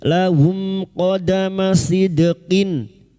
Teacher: Mim sukun bertemu qaf idhar syafawi. Mim sukun dibaca jelas tanpa mendengung.